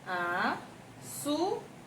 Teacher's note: Ela é a penúltima sílaba mais forte da palavra. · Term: sílaba tônica